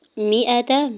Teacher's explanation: میم کی زیر حمزہ کے زبر تا کے زبر کو بغیر کھینچے ہوئے ادا کرنا ہے